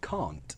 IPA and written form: kɑːnt (can't)